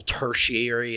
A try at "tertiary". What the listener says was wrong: I like you turned that into it sounded like you said all tertiary. is like a different word instead of just tertiary.